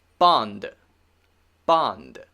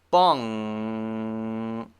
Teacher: i'm again making the normal n sound coming through my nose